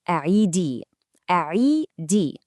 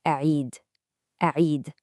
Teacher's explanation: But for a male teacher, it's just a'id, a'id. The big difference is that final E sound you hear in the feminine form, a'idi.